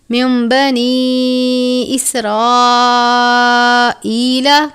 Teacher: نون ساکن ہے، اس کے بعد با ہے، اقلاب کا قاعدہ لگتا ہے، یعنی نون ساکن یا تنوین کو میم سے بدل کر، یہ جو آپ میم دیکھ رہے ہیں، میم سے بدل کر اخفا کریں گے. اس کو ہم من نہیں پڑھیں گے بلکہ من بنی اسرائیل.